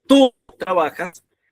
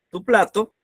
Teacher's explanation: Si decimos tú trabajas, tu plato, la diferencia está que cuando el tú es un pronombre personal suena fuerte, pero cuando es un adjetivo posesivo suena suave